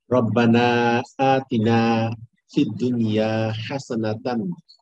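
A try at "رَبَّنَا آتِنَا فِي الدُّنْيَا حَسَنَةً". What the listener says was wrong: Very good. আবার বলেন।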